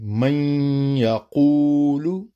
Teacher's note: جیسے نون ساکن کے بعد ہے یا، تو نون ساکن یا تنوین کے نون کو حرف ادغام میں ضم کریں گے، نون ساکن کو یا میں ضم کریں گے اور غنہ کے ساتھ کریں گے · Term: غنہ کے ساتھ ادغام